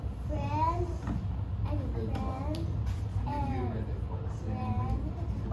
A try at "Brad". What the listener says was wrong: You're saying brand. There's no N sound in it. Look at your letters. Brad.